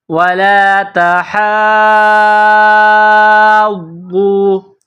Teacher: ہا کے اوپر کڑا زبر ہے، اس کو ایک الف کے برابر کھینچ کر پڑھیں گے، ہا غاد مد، کڑا زبر ہا، غاد واو پیش غو، ولا تحاضّو۔ یہ بڑا مد ہے، چار الف کے برابر، اس کو کھینچ کر پڑھیں گے